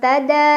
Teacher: Ada ikhfa akrab karena ada nun sukun yang bertemu dengan huruf ta, dibaca nun sukunnya samar-samar ke ta sambil dengung.